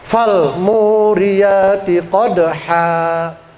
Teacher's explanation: Maka huruf fathahnya itu huruf ha-nya itu menjadi panjang. Alifnya berfungsi sebagai huruf mad namanya mad iwad an tanwin fal muriyati qodha.